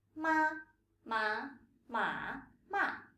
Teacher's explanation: They are rising and falling tones in Mandarin that differentiate meanings. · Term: the four tones